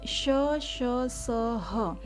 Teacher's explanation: ये ऊष्म व्यंजन कहलाते, क्योंकि इसके उच्चारण में जो ऊर्जा है वो रगड़ के साथ, ऊष्मा के साथ बाहर निकलती है,